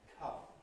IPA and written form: kʰʌm (come)